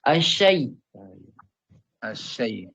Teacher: Jadi ketika asyai itu terangkat tengah-tengah lidahnya ke langit-langit.